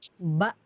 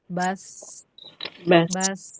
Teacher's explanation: Kalau ba kan dia tegas ya, menghentak ya. Ba tuh tegas, tidak ngalir. Kalau bas dia ngalir.